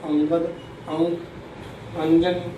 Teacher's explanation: अनुस्वार का जो उच्चारण होता है वो नासिका से होता है, नाक से होता है, इसे अंगद, अंक, अंजन, इसका जो उच्चारण करते हैं नाक का हम सहारा लेते हैं।